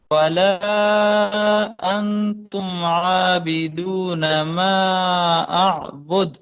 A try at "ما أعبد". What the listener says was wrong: اعبد نہیں ہوگا نا، کلکلا کرنا ہے. دیکھو یہ دال ہے نا، دال کے اوپر ہم نے آواز کو لوٹانا ہے.